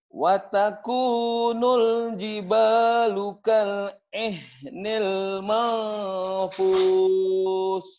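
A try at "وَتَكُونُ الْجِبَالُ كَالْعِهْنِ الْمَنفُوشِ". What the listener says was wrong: Mafus. Mampus loh, itu lain lagi ya. Mafus. Shin ya, ujungnya. Watakunul jibalukal ihnil mafus. Shinnya keluarin.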